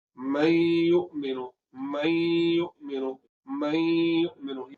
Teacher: तो यहाँ पर या आ गया, तो इदगाम किस तरह हो गया कि नून साकिन को हमने क्या करना है, या के साथ मिला देना है। तो नून साकिन को जब हम या के साथ मिला देंगे तो फिर क्या होगा, एक हरफ मुशद्दद पढ़ा जाएगा।